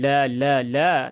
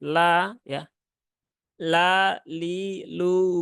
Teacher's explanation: ini tipis semua ya hurufnya tidak ada yang tebal lamnya juga tipis Jadi bukan la la la tetapi la ya la li lu